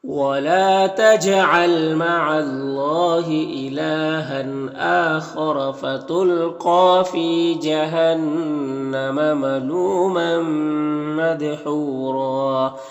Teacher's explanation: یہاں پر وقف کریں گے تو را کو پر پڑھیں گے اور ایک زبر کے ساتھ الف پڑھیں گے